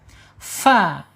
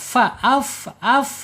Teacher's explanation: ujung gigi seri atas menyentuh perut bibir bagian bawah